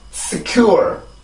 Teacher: 이음절이고요. 뒤쪽에 있는 or 이라고 하는 발음에 강세가 들어가요. 그러면 여기는 작은 음절, 여기는 큰 음절이 되죠.